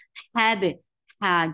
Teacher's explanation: The sound is very short. Hab, ha, give a very misty sound